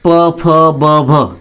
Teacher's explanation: उच्चार करताना आपल्या दोन्ही ओठांचा एकमेकाशी स्पर्श होतो आणि म्हणून त्यांना ओष्ठ्य वर्ण असं म्हणतात